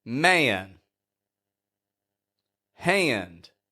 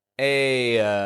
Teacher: we're transitioning from a to n that means that we lower the tongue in the back of your mouth a and then raise it in the front M aen now